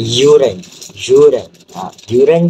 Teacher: separuh vokal di langit keras bersuara yang akan mengeluarkan bunyi seperti huruf J iaitu yuran.